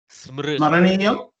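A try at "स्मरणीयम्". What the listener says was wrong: Smaraniyam. Beautiful.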